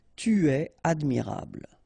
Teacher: When you've got a verb at the tu person, okay, so second person of the singular, don't make a liaison after the verb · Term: no liaison